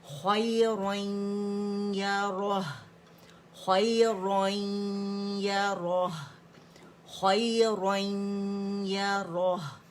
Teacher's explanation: اور پھر یہاں جو رن تھا اس کا نون یا کے اندر چلا گیا، تو جو یا جو مشدد ہمارے پاس آیا.